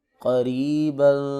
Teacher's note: را کے نیچے زیر ہے تو اس کو پر نہیں بلکہ باریک پڑھیں گے